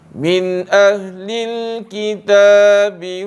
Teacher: nun mati yang bertemu dengan huruf hamzah, maka dia dibaca jelas